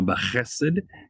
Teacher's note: B'chesed, chesed, there's a segolet, so it's usually pronounced, the stress is on the first syllable